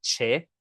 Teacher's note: When people talk really fast, the chie at the end might sound like che. They might shorten it and make it che.